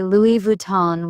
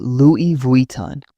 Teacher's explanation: I noticed people say Louis Vuitton with a hard N. In French, it's Louis Vuitton with a nasal sound